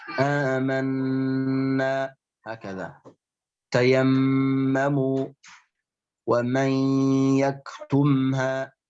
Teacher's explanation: gunnah yang paling tinggi kedudukannya, akmalu ma takun, yaitu ketika nun dan mim musyaddadatain, ketika nun dan mim dalam keadaan bertasydid.